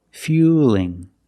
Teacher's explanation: Now we see the word fueling with the L between vowels. So it's a light L now.